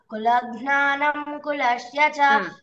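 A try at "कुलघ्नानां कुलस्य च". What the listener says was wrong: అక్కడ నా కి దీర్ఘం ఉంది ఇందాక కూడా చెప్పలా నువ్వు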